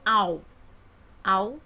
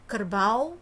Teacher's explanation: Au, berarti ada dua vowel, kerbau, maka ada bunyi diphthong au, yaitu vowel a dan u dalam satu syllable.